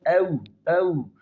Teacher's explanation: واو کا مخرج او، او دونوں ہونٹوں کا گول کرنا